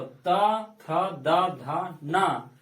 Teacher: त वर्ग में जिह्वा दांत को स्पर्श करती है।